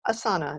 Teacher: it has no stop consonants in it, right? It has an S and it has an N. It doesn't have any T's or D's or P's or B's.